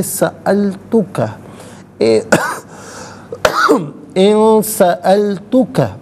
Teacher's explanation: ان میں نون ساکن ہے، اس کے بعد سین حرف اخفا آ رہا ہے، تو نون ساکن کو یہاں پر اخفا کے ساتھ پڑھیں گے۔